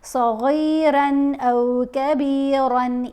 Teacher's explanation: صاد، غین، را تینوں کو ہم نے پر پڑھنا ہے، موٹا پڑھنا ہے. را کے اوپر تنوین ہے، اس کے بعد حمزہ آ گیا تو ہم نے صغیرن غنہ نہیں کرنا، تنوین جلدی پڑھی جائے گی.